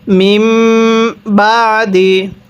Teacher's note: সাকিনটিকে গুন্নাহ করে পড়তে হয় অবশ্যই নিয়মটি আমরা এখানে স্মরণ রাখবো মিম সাকিনের পরে বা থাকলে মিম সাকিনটিকে গুন্নাহ করে পড়তে হয়